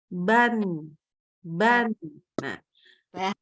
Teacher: kalau kita Letakkan tangan di depan mulut kita maka dia tidak terasa ada udara yang keluar ya tidak ada udara yang keluar kemudian apalagi dia itu karena · keluarnya Nggak cuman di mana dari lisan tapi juga dari hidung